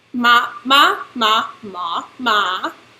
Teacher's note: they have five tones which is more than Chinese its high low middle rising falling